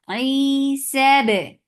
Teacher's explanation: Give qalqala with majhura sound